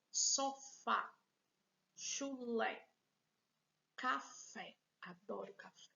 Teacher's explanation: o acento agudo tem um som mais aberto